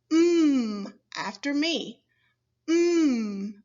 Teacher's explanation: your mouth stays completely closed air does not flow freely from your mouth it is released through your nose